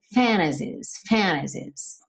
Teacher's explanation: What if all these fantasies, não tem problema nenhum se você pronunciar o T, fantasies, mas é comum, muito comum, especialmente no inglês americano, que esse T suma